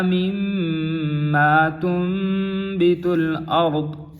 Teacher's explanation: نون کو میم کے ساتھ بدلا گیا ہے کیونکہ آگے با آ رہا ہے، نون ساکن کے بعد حرف با آ رہا ہے، یہاں نون ساکن کا اقلاب ہو رہا ہے۔